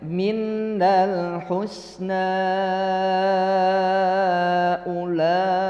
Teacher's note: Mad jaiz munfasil, yang bacaannya menurut Syatibiyah sama dengan mad wajib muttasil. Jadi dibacanya 4 atau 5 harokat.